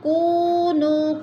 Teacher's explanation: کونو، کو پہ وہ مدہ، نو پہ مد منفصل، کیونکہ حروف مدہ کے بعد حمزہ دوسرے کلمے میں آ رہا ہے تو ادھر مد منفصل ہو رہی ہے، چار الفی مد ہے، چار حرکات کے برابر ہم نے اس کو لمبا کر کے پڑھنا ہے